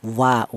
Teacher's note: Kemudian untuk huruf wawu ini keluar tadi sudah, yaitu keluarnya huruf berasal dari kedua bibir yang renggang, wa tidak rapat ya wa.